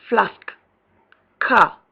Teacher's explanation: Long R, back, open, tense, and unrounded